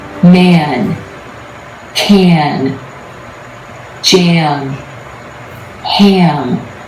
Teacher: the a as in black takes on a different quality when it comes before the nasal consonants